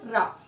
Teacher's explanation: alveolar ridge को हल्का सा टच करता है, दोनों थोड़ी देर तक काफी टच होते हैं और कह सकते हो कंपन के साथ, अत्यधिक कंपन के साथ ध्वनि उत्पन्न होती है, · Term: ट्रिल